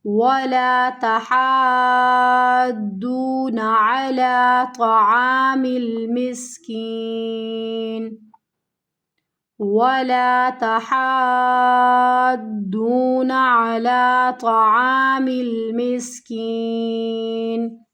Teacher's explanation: مد والے حرف کے بعد اگلا حرف کیا ہے، مشدد حرف ہے، مد لازم ہے، تو اس کو ہمیں کھینچنا ہے 6 الف کی مقدار کے برابر